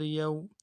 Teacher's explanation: واو لین ہے، نرمی سے پڑھیں گے بغیر کھینچے